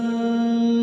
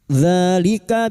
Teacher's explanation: alif kecil di atas dua harakat kita panjangkan